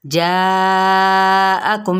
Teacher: جاءکم یہاں پہ 4 حرکات کے برابر کھینچنا ہے